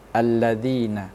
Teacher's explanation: Yang tadi yang di awal adalah kalimat alif lam syamsiyah. Karena huruf alif lam itu bertemu dengan huruf syamsiyah lam dibaca idgham atau masuk ke huruf lam.